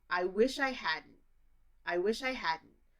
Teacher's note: And I thought about hadn't, and hadn't also doesn't have any D sound, at least when I say it.